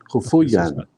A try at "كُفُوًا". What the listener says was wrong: So there's no two dots. Kufuwan. So now whenever if you say ya instead of wow, I'll just say there's no two dots, and then you'll know it's wow,